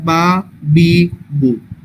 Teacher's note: گیلا حصہ ہوتا ہے ہونٹ کا, ان کو ملانے سے با ادا ہوتا ہے